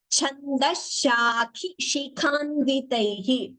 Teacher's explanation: two khas with Mahaprana here